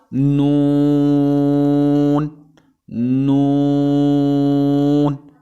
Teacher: اس کے بعد لفظ ہمارے پاس نون ہے، نون، نون یہ حروف طرفیہ ہیں اور یہ زبان کا کنارہ اور انیاب سے ثنا تک کے دانتوں کی جڑوں سے ادا ہوتا ہے